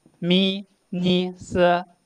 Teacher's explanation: The third from last will be stressed